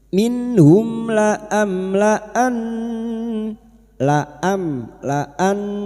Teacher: Minh mim sukun bertemu lam idhar syafawi. Mim sukun dibaca jelas tanpa mendengung.